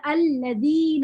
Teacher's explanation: یہ زال زبان باہر نکال کے نرم حروف کی طرح پڑھنا ہے. الذین، اور یہ کیونکہ یا مدہ بھی بن رہا ہے تو یہ 2 حرکت تک جائے گا.